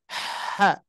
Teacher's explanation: bunyi angin dulu angin dulu udara baru berikan harakat gitu